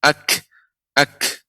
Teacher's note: Sifatnya ada hamas, suaranya dengan cepat keluar udaranya.